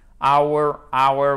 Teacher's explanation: le h n'est pas prononcé donc on ne l'entend pas ce h